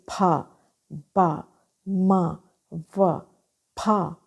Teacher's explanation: दोनों lips close हुए, एकदम से रिलीज हो गए, एकदम से दूर हो गए एक दूसरे से. तो जो साउंड प्रोड्यूस हुई उसको बाइलेबियल साउंड कहते हैं.